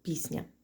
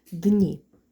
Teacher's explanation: звук пом'якшений і впливає на попередню приголосну с та також її пом'якшує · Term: уподібнення за м'якістю